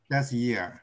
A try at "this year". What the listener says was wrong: This Yes, ▁yes. ▁Not ▁that ▁year. ▁Okay. ▁This ▁year.